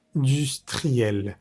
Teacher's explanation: La in es vocal nasal y se dice a la in como sonriendo. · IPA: [ɛ̃]